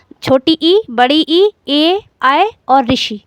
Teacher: जिन स्वरों के उच्चारण में जिह्वा के आगे का भाग सक्रिय रहता है वे अग्रस्वर कहलाते हैं